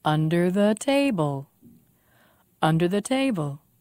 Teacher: Five syllables. Stress on te.